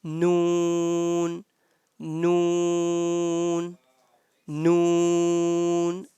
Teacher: the sound of noon comes out from the part of our hard palate from the front part of our head hot palate noon noon